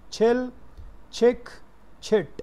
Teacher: च का देखें जी ये सिंबल है, टी लगा के साथ में श का, ये दोनों मिलाएं तो ये च की साउंड की सिंबल है, चिल, तो ये च, इसको आप छिल, जैसे मैंने बताया कि च को छ बोलना जब ये स्टार्ट में होगा, ये भी एस्पिरेटेड है, तो ये साउंड जब शुरू में आएगी तो दैट विल बी छिल, नॉट चिल, छिल।